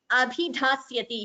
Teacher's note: Here, bhi and dha both are Mahapranas.